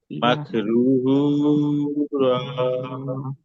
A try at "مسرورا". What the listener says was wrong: মাকরু না ভাই, মাছ মাছ, মিম কে